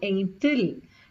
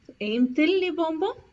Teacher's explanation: So there are two vowels together. Instead of having two vowels together, you separate them using a T.